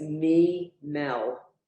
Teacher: So there's nothing under the lamed, so they connect. You don't give the lamed a separate sound because it doesn't have a vowel.